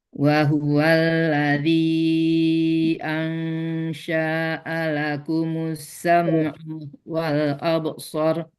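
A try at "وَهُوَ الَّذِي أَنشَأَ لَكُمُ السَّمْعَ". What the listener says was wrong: Syahnya nggak panjang loh. Ansya'alakumus.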